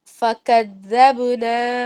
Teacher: پھر اس کے بعد فکذبنا، آپ دوبارہ پڑھیں گے تو فکذبنا سے شروع کرتے ہیں، با پر قلقلہ کریں گے